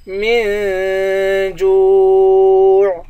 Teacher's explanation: یا کو غین کے ساتھ ملائیں گے، غین موٹے حروف میں سے ہے، غین کو موٹا پڑھیں گے، نون کو یا سے ملائیں گے، اس کو ایک الف کی مقدار کھینچ کر پڑھیں گے، وَلَا يُغْنِي مِن جُوع، میم کو نون کے ساتھ ملا کر نون پر اخفا کریں گے، جیم کو واو کے ساتھ ملائیں گے، واو کو ایک الف کی مقدار کھینچ کر پڑھیں گے، آخر میں عین ہے، عین کی آواز نکالیں گے